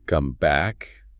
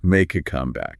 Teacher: when it's the noun, the idiom, we say make a comeback. The stress hits really hard on the first syllable.